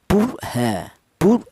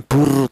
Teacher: Jadi rnya ini dibaca tebal atau dibaca tafhim. Alasannya ada ro mati yang di dalam huruf yang berharakat dah dammah.